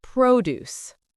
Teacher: When we talk about fresh farm items, the stress is on the first syllable.